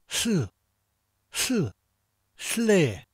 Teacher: put your tongue on the roof of your mouth just above your teeth. And say L like the L in lid, L, while blowing air.